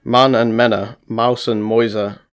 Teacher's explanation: The first change is umlauting, the process of back vowels being fronted with the succeeding close front vowel or palatal approximant.